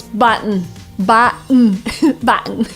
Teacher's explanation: Initially you would pronounce button with a T, but native speakers would often use the glottal stop here